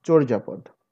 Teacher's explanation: এখানে একটি ও আছে, নট অ, অর্থাৎ অটা সংবৃত উচ্চারিত হয়েছে